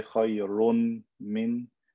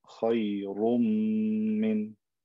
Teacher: I take the n sound, I merge it into the m.